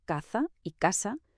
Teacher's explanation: Aquí la Z y la C, antes de E o I, se pronuncian exactamente igual que la S. Por lo tanto, caza y casa suenan idénticas. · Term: el seseo